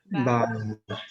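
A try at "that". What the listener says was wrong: Don't say bad. Bad. Como nosotros hacemos la T, porque no es nuestra T. Es la TH de ellos. Bad. Con la lengua atrás de los dientes. Bad. Bad.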